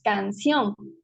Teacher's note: la sílaba tónica justo es la última es una palabra aguda y se tilda sí cumple con todas las normas de ortografía